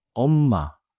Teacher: In Korean, when you call out, the pitch often rises sharply and then holds a little. If the pitch is flat, 엄마 can sound like you are just saying the word mom. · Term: calling intonation